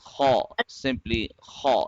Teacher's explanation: it is read from the top throat. The sound, the scratchy sound, scratchiness will be there. So this is haw.